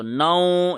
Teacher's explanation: اس کو ناک میں پڑھنا ہے، زبان کہیں ٹچ نہ ہو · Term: ادغام